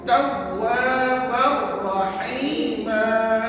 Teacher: tanwin ni tak berbunyi, sebaliknya yang kita bunyikan ra yang satu · dalam bacaan nanti tidak ada bunyi sengau dan tidak ada kiraan pada harakatnya